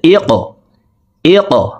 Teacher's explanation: কফ কলকলার হরফ উপরের দিকে ধাবিত করে ধাক্কা দিয়ে উচ্চারণ করব। ইকরা, হামজা কফ জের ইক, ইক।